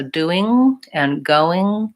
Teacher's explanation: I'm sealing off with the back of my tongue lifting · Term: nasal sounds